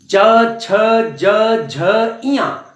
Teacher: च वर्ग तालु से, च वर्ग को तालु से हम बोलेंगे। तालु आपकी जुबान जो है, जिह्वा तालु में जाके टकराएगी।